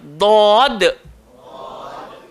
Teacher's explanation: Sepanjang-panjang lidah, langgar bahagian gigi atas. Kemudian kita kena tebalkan dia. Dod. Tak payah muncung.